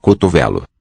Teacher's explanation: I think the medial O, that second O in the word is also raised.